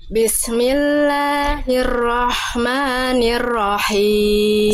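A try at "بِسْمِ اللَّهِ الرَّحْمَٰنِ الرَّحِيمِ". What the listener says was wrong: PR-nya satu, berarti tinggal huruf ro-nya dihilangkan getarannya. Maaf. Jangan terlampau berlebihan getarannya ya. Masih ada r. Masih gitu. Ro. Bismillahirrahmanirrahim.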